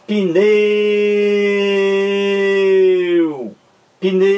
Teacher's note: O U é pronunciado mais fracamente. Então, já que o E tem a pronúncia mais forte na sílaba pneu, então o E é a vogal. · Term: semivogal